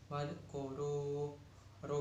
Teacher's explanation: bacaan tafhim sebab ra berharokat domah